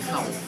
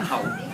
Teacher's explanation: the Thais do this, they don't pronounce the last letter or last consonant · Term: Tinglish